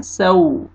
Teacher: वाव लीन है, वाव से पहले जबर, सीन को नरमी से अदा करना है